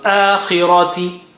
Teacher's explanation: Khi is still high sounding, but kasra brings it down. So akhirati, ra is still thick, ra.